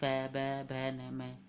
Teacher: होठ से उच्चारण यानी होठ काम करेंगे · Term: ओष्ठ